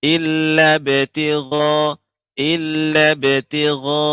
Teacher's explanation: Hanya dipantulkan saja tanpa ada hamzahnya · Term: qalqalah